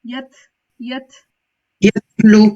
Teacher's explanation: تا کے اوپر ہم کیسے اس کو پڑھیں گے تھوڑا سے ہمس کے ساتھ نا